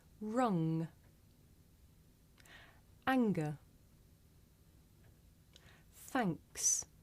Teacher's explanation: So you find it in the middle of the word anger, and the middle of the word thanks, and at the end of the word rung. Now we make this sound towards the back of the mouth. And if you do this sound correctly, you can feel a vibration in your nose